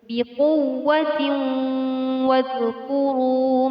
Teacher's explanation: Terdapat tanwin bertemu dengan huruf wawu, dinamakan hukum bacaan idgham bi gunnah. Idgham bi gunnah artinya nun mati atau tanwin dibaca dengan dengung.